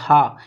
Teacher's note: यहाँ जो छोटी जीभ होती है अलिजीवा, वहाँ से हा का उच्चारण स्थान होता है